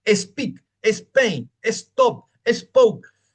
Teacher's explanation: Le agregamos una E que no existe, la llamamos la E fantasma